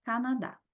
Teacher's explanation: o dá é o mais forte tá acentuado então última sílaba oxítona